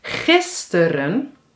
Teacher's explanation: De klemtoon ligt op gis + tur-un = twee keer [U] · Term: schwa